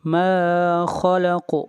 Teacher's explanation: من شر، من شر، میرے بات پڑھیے، من شر ما خلق، ما خلق، ما خلق، خا حروف مستعلیہ میں سے ہے اور خا کو ہمیشہ موٹا پڑھا جاتا ہے۔ خلق اور قاف کے اوپر قلقلہ ہوگا۔